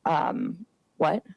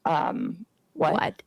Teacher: She has horrible, horrible vocal fry.